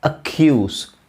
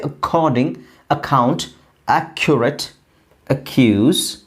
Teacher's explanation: ನೀವು ಮಹಾಪ್ರಾಣನ ಯೂಸ್ ಮಾಡಿ, ಖಗೆ, ಈ ಖ, ದೊಡ್ಡ ಖ ಯೂಸ್ ಮಾಡಿ, ಅದು ಸರಿಯಾದ ಪ್ರೊನೌನ್ಸಿಯೇಷನ್. ಅಕ್ಯೂಸ್, ಎಲ್ಲ ಕಡೆನೂ ಅಷ್ಟೇ.